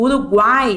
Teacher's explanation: vai ser a semivogal U, o A, que é a vogal, e o I, que é a semivogal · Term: tritongos